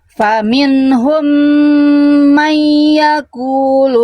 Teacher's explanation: Mai yang ini tahan, idgham bigunna baru kita bahas. Nun sukun ketemu ya tasydid ditahan. Ya, 2 harokat.